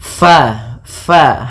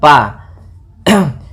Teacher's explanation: Usahakan di dalam melafalkan huruf fa ini harus ada aliran nafas, karena fa memiliki sifat yang namanya sifat hamas.